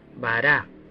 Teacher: Esta palabra no tiene ninguna marca en particular, por lo que la última sílaba de bara sería subrayado